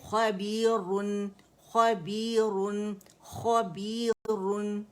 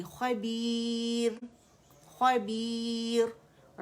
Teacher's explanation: روانی میں یہ موٹا پڑا جائے گا لیکن جب اسے وقف کریں گے تو پھر کیونکہ را کو ہم ساکن کر دیں گے تو را ساکنہ سے پہلے ہمارے پاس یا مدہ آ رہا ہے تو پھر یہ باریک ہو جائے گی